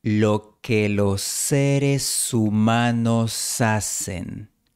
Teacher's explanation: La s de los se fusiona con la s de seres y se convierten en una sola s. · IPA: [lo'se.ɾe.su'ma.nos]